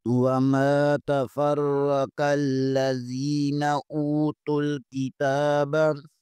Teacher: یہاں پر تا کے اوپر کھڑا زبر ہے، اسے بھی ایک الف کے برابر کھینچیں گے